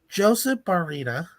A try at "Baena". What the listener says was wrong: I don't think that's how you pronounce his last name. Oh, because it's Joseph Baena. Also, because there's no R in his name.